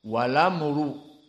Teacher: Maka kalimat wal amru naql di sini. Hamzahnya dihilangkan, langsung masuk kepada lam, harokat hamzah kepada lam. Walamru dan ro mufakhamah.